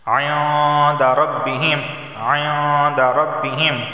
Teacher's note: دال حروف اخفا میں سے اخفا والا غنہ ہوگا، یعنی زبان کی نوک اوپر کے تالو سے نہیں لگے گی۔